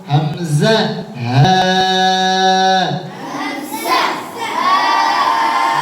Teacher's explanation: 1 নম্বর মাখরাজ হলকের শুরু হইতে হামজা হা।